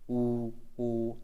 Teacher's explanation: और यहां पर वृत्ताकार में होते हैं। जैसे ऊ बोलोगे ना तो गोल बन जाता है आपका मुंह। ऊ ओ तो गोल बन गया आपका मुंह।